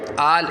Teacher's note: اب یہاں پہ دیکھیں آل، اس کو پڑھنا کیسے، اس کی پہلے ہجے سماعت کر لیں، حمزہ لام کھڑا زبر آل، حمزہ لام کھڑا زبر ال نہیں پڑھیں گے کیونکہ دیکھیں اس سے پہلے، لام سے پہلے حمزہ کے اوپر کھڑا زبر ہے، کھڑا زبر کو کھینچ کر پڑھتے، تو کھینچ کے آگے لام کے ساتھ ملائیں گے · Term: مد لازم